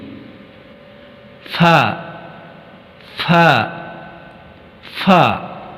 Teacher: اوپری اگلے دانتوں کے سرے اور نچلے ہونٹ کے ملاپ سے آواز نکلے گی